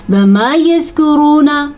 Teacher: वाव मद्दे को हम ज़रूर अदा करेंगे, खींच के पढ़ेंगे क्योंकि वाव साकिन से पहले पेश आया हुआ है